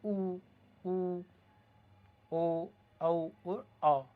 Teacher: जीभ का जो पीछे का हिस्सा है वहाँ से इनकी ध्वनि निकल रही है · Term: पश्च स्वर